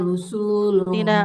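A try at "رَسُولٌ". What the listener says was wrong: Rasul, bukan rusul, rasul.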